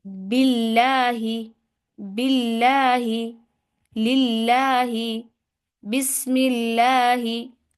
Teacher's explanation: अगर अल्लाह के लाम से पहले आ जाए ज़ेर, तो अल्लाह का लाम क्या पढ़ा जाएगा? बारीक